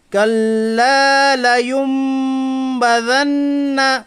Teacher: نون ساکن کے بعد با آیا اس لیے اقلاب ہوگا، یعنی نون ساکن کی آواز کو میم ساکن سے بدل کر غنہ کے ساتھ پڑھیے